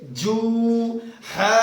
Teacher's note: یہ جیم کے اوپر سختی کرنا ضروری ہے کیونکہ تشدید ہے